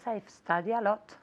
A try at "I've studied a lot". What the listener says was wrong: Ahora, la D. Me faltaba un poco la D en la primera.